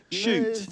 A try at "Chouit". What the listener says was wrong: No, it's not shoot. Chouit, like tweet.